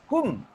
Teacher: Udara bunyi keluar ke hidung sebab bibir tutup. Hum. Kan ketika mim bari mati tu udara dan bunyi keluar ke hidung. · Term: dengung